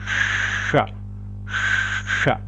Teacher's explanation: Si yo lo hago con la punta de la lengua hacia el cerebro, hacia el paladar blando, nace el sonido cerebral.